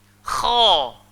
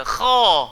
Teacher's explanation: Sorry, bukan di pangkal lidah, bahagian halkum di bahagian atas sekali. Itu tempat keluar ghain, itu tempat keluar kha. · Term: huruf kha